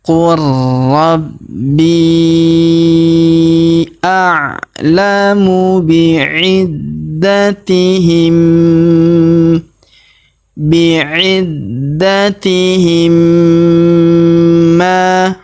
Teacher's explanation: mim sukunnya melebur masuk ke huruf ma yang berharokat tasdid. Kita tahan dan kita tekan serta kita dengungkan 2-3 harokat